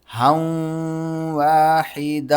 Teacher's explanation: اب ہا کو ہم واو کے ساتھ ملائیں گے اور تنوین پر ہم غنہ کریں گے